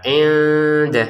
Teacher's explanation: Giliran nun sukun bertemu dal dibaca samar.